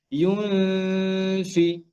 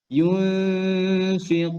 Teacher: যে ইউনফিকুন এটা পড়ার সময় আমরা নুনকে ক্লিয়ার করব না অর্থাৎ নুনটাকে আমরা পড়বো না এন্ড সাউন্ড করব না নুন সাউন্ড হবে না নুনটা হিডেন থাকবে কিভাবে ইউনফি আপনি খেয়াল করবেন আপনার উপরের দাঁত আমাদের ফায়ের মাখরাজে